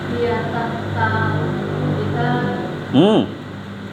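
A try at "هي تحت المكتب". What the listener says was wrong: Lihat itu ada mimnya. Walaupun kecil ditangkap ya. Hiya tahtal. Nah, bukan kitab ya, tapi hiya tahtal maktabi.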